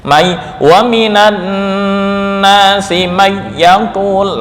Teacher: idgham bila gunnah, tanpa dengung. Mai wa minan nasi may yaqul, langsung begitu.